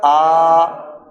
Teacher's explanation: ایک الف لمبا کر دیں اسے. ایک الف کا مطلب 2 سیکنڈ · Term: مد اصلی